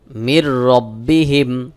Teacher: মির রব্বিহিম এখানে দেখুন নুন সাকিনের পরে র ইদগামে বেগুন্নার হরফ নুন সাকিন কে বাদ দিয়ে র কে যুক্ত করে মিলায় পড়তে হবে